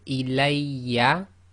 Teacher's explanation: the waw and the ya are read with more emphasis but only one length long.